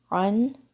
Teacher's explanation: عین کی آواز حلق کے درمیان سے